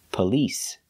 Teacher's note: Because the stress is on the second syllable, the first syllable is pronounced relaxed.